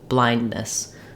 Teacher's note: So blind is stressed and ness is short.